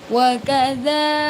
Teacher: Dalnya dibaca panjang karena ini berharakat fathah panjang ya.